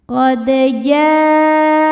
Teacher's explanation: Kemudian hamzahnya a pada kata jaa. Maka jimnya dipanjangkan, boleh 4, boleh 5 harokat. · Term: mad wajib muttasil